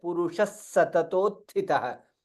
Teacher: Purusha, there is double sa there.